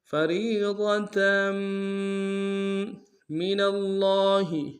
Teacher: میم کے اوپر تشدید زور دیں گے اور تنوین پہ غنہ بھی کریں گے